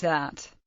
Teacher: voiced dental non-sibilant fricative, as in English that